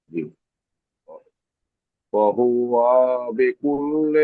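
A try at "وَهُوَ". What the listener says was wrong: ওয়াও টান হবে না, ওয়া হুয়া বিকুল্লি।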